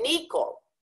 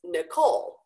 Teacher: stress on the second part, because my name is of French origin